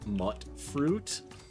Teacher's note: the correct pronunciation is actually mutt fruit, because there's no real vowel that makes that ooh sound